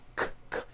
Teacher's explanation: Q sounds are made with the K sound, k, k, and the W sound, w, put together.